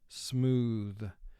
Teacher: the second sound th represents we call this the voice sound because we vibrate the vocal cord when we produce the sound